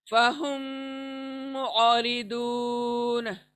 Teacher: साकिन आइन निकालना है, उसकी आवाज छोटी सी आएगी। फहुम औरिदून, आइन सॉफ्टली हलक से आएंगी।